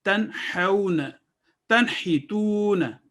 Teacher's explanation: ہم نون کو اظہار کے ساتھ کلیئر کر کے 1 سیکنڈ کے لیے پڑھیں گے